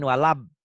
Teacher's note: kenapa jadi dibaca walabdolin karena bibirnya dirapetin